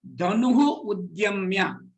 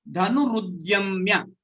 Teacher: When the word dhanuhu udyamya join together, it becomes dhanurudyamya. The r sound, which is not there, gets interpolated between the two.